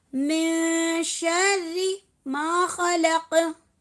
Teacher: तो मिन शर्री मा खलक नहीं होगा, होगा मिन शर्री, यानी कि शीन की वजह से, शीन हुरूफ इख्फा है हमारा, हुरूफ इख्फा शीन की वजह से यहाँ पर नून साकिन की आवाज़ को क्या करेंगे, नून साकिन की आवाज़ को छुपाएंगे, नून की आवाज़ को नाक में छुपाएंगे 2 सेकंड के लिए